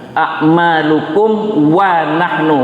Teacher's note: mim itu harus bacaannya jelas artinya bibir tertutup